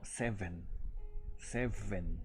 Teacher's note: haciendo este sonido de pegar los dientes incisivos a los labios inferiores